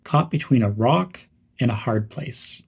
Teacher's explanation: Some pronunciation tips are to stress rock and hard place.